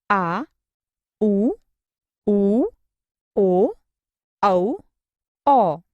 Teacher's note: जिन स्वरों के उच्चारण में जिह्वा का पिछला भाग सक्रिय रहता है उन्हें पश्चस्वर कहते हैं।